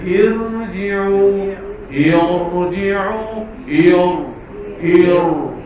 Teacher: Asalnya hamzah tu tak ada baris. Kita datangkan baris bawah, maka ra tu jadi tebal.